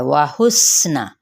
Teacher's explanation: واو ہونٹوں کی نا تمام گلائی سے